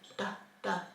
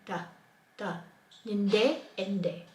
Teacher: Nda is made right under the teeth